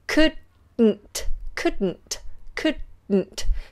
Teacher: we allow then the sound to explode out of the sides of the tongue couldn't couldn't couldn't so you do it by keeping the tongue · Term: lateral plosive